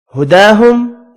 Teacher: کھڑی زبر کو ایک الف کی مقدار میں کھینچ کر پڑھیں گے، یہاں میم کا اظہار ہوگا